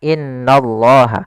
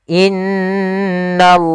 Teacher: in maka ditahan sepanjang dua harakat tidak langsung Dibaca innallah tapi ditahan dulu sepanjang dua harakat untuk menyempurnakan bacaan gunahnya